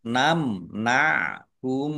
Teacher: Mim sukun bertemu dengan huruf nun, bacaan idhar safawi dibaca jelas.